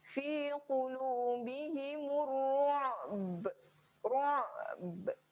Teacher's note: Dia ada bunyi di hujung tu. Bunyi ba di hujung tu tidak terlalu, macam mana saya kata, tidak terlalu lantunan yang kecil saja. Dia bukan lantunan yang besar. Walaupun dia berada tempat wakaf, cuma dekat sini nak highlightkan ba walaupun berada pada keadaan raum, dia pun ada lantunan. · Yang ni kena highlightkan pada ain dahulu. Jelaskan pada ain dahulu berada di tengah kerongkong. Yang ni kena tekan di tengah kerongkong dahulu.